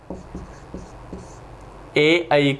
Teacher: ए ऐ का उच्चारण स्थान कंठ तालु होता है